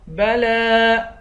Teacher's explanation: لام پر کھڑا زبر ہے اور اس پر مد بھی ہے، اس مد کو پانچ الف کی مقدار کھینچ کر پڑھیں گے